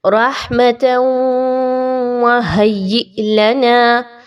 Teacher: تا کے اوپر دو زبر کی تنوین کے بعد واو کا حرف ہے تو یہاں پر ادغام کیجئے مع الغنہ